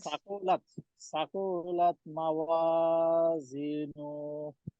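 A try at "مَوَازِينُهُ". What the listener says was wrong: নুনে টান নাই তো, মাওয়াজিনু, নু নু নু, হ্যাঁ এই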